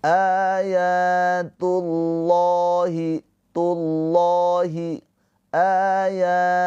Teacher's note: Lafaz Allahnya dibaca dengan tafkhim tebal pakai o. Kenapa? Karena sebelum lafaz Allah ini harokatnya dhammah.